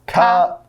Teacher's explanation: in Taiwan they say without the T sound, they're like Cut.